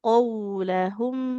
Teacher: Jadi huruf qaf itu kan huruf tebal. Memang vokalnya kayak ke o ya.